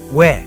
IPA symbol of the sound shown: we